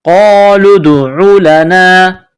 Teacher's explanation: قاف کو موٹا کرنا ہے